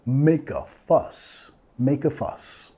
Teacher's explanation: Make a, vinculando el sonido schwa